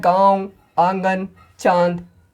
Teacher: अनुनासिक मतलब जिसका उच्चारण नाक और मुंह दोनों से हो, जैसे चंद बिंदु जो होता है गांव, आंगन, चांद इत्यादि।